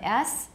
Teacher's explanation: says a jet of air striking the edges of the teeth the rapidly moving air stream is formed by the narrow gap between the tongue and the alveolar ridge · for silly your teeth are going to be closer together and much of the sound is produced by a jet of air striking the edges of the teeth